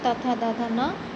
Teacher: त थ द ध न दंत में आता है।